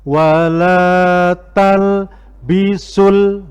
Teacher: Pertama, di situ ada al-haqqo, ada al di situ. Di bacaan al itu dibaca jelas. Idhar qamariyah.